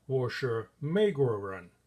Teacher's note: Here I'm emphasizing American, 美国人, and I stretch it out slightly longer.